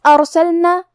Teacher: کلمت ارسلنا یہاں حرف الراء کا حکم ہے تفخیم کیونکہ اس پہ جزم ہے، لیکن اس کے پہلے والے حرف پہ الف پہ زبر ہے تو ہمیں را کو موٹی آواز میں پڑھنا ہے. پھر یہاں لام ساکن ہے تو ہم حرف اللام کو ظاہر کریں گے.